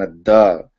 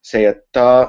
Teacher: du is a voiced sound because the vocal chords are engaged whereas T is an unvoiced sound because the vocal chords are not engaged